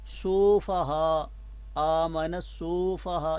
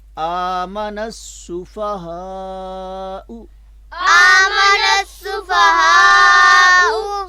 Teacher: سفہاء، آمن السفہاء، یہ غلط ہے، یعنی سین کی پیش کو لمبا نہیں ہونے دینا · فا کی زبر کو بھی لمبا نہیں ہونے دیں گے